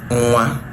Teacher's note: And if you pronounce it in 2 syllables, it means that obviously the first syllable is a nasalized syllable, which means that the N there is a syllabic nasal. Now, let's not forget the fact that that N there, in pronunciation realization, it is pronounced as nga, nga. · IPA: [ŋwa]